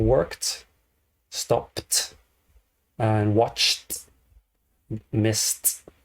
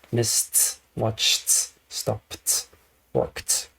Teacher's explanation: the doesn't vibrate doesn't vibrate watch no vibration Miss no vibration so when you have no vibration you have the non-vibrating T sound